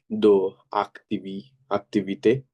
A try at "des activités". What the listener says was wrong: দেজ অ্যাক্টিভিতে liaison হবে না, এই এসটা দেখেন ভাওয়াল লিয়াজো কখন হয়? কনসোনেন্ট প্লাস ভাওয়াল, তাই না? এই পাশ করে, হ্যাঁ, এটা কনসোনেন্ট হয়, পরের শব্দের প্রথম লেটার ভাওয়াল হয়, সেক্ষেত্রে in most of the cases liaison করতে হবে।